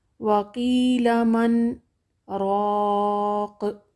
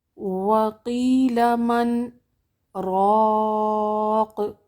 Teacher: من پر ہم نے سکتہ کیا ہے اور سانس نہ ٹوٹنے پائے، صرف آواز کو تھوڑی دیر کے لیے روکنا ہے